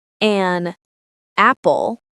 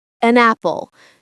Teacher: The two words connect and sound like one word. It's smooth. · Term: connected speech